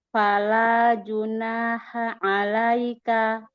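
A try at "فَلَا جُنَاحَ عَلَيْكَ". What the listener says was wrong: Fala. Jangan falah. Fala. Kurang lebar kah makhrajnya? Kalau la, berarti cuma di ujung lidah yang menempel. Itu cuma ujung lidahnya yang nempel. Itu kan lebih ini ya, lebih sempit makhrajnya. Bukan Allah.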